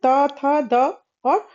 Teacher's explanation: इन वर्णों का उच्चारण करते समय जीवा जो है वह ऊपर दांत के अंदरूनी भाग को स्पर्श कर रहा है। इसके वजह से इसे दंत ध्वनियां कहते हैं। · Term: दंत्य